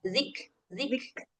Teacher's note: buat kafnya sedikit hamsnya